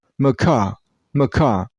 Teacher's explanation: The first syllable is pronounced very shortly. Like this. So macaw.